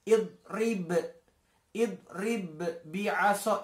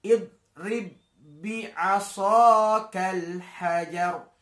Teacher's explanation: Jadi cukup dibaca langsung dimasukkan ba-nya. Jadi tidak perlu dikolkolahkan. Karena itu masuk kategori idgham mutamatsilain atau idgham misli.